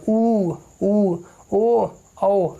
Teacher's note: ऐसे स्वर जिसको बोलते समय ओठ गोलाकार बन जाए, अर्थात ओठ कैसा हो जाता है, इसमें ओठ आपका गोलाकार हो जाता है। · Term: वृत्तमुखी